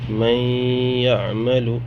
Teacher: نون ساکن اس کے بعد پھر یا آ رہا ہے، یہاں پہ ادغام مع الغنہ ہوگا